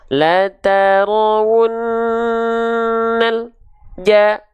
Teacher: antara bunyi lam, al, nal dengan ja tidak boleh ada jeda hening. Gak boleh ada berhenti dulu. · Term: tawassut